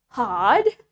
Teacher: in British we don't pronounce the r sounds clearly